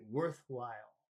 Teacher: when you have two words together, it's the first word is usually the one that has the emphasis. So you put more emphasis on the word worth, and you say worthwhile.